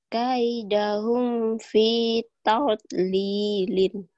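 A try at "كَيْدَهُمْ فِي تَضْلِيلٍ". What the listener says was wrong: Tuh udah bisa. Dikit-dikit. Walaupun belum sempurna.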